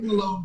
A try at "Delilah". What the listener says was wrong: Delilah. You put an R on the end of my name.